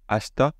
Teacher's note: le i et le e sont dévoisés quand elles se trouvent entre des consonnes non voisées. Donc c'était par exemple avec ce qu'on a vu ici, ashita, vous voyez, ta, c'est pas voisé, c'est pas en da.